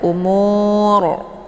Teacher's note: untuk bacaan rnya dibaca tebal ya karena huruf yang di belakangnya yaitu wau sukun ya maka ini dibaca tebal umur ya dengan posisi pangkal lidah